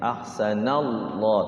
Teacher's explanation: lafaz Allah sebelumnya fathah dibaca tebal atau tafkhim ya, tafkhim.